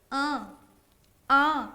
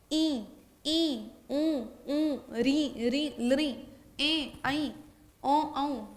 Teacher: जैसे अ इसका उच्चारण मुंह से हो रहा है और उसके साथ-साथ साथ-साथ हमने क्या है ये वाली चंद्रबिंदु जो होती है जिसके ऊपर चंद्रबिंदु लगी होगी वो अनुनासिक स्वर हो जाएंगे। अ आ इसका उच्चारण जब करोगे कंठ का भी प्रयोग हो रहा है और आपकी नासिका का भी। इ उ ऋ ऋ ल ए ऐ औ औ है ना इस तरह से इसका उच्चारण हो जाएगा।